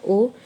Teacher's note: कंठ और ओठों की सहायता से बोले जाने वाली ध्वनियाँ, कंठ और ओठों की सहायता से बोले जाने वाली ध्वनियाँ, ठीक है।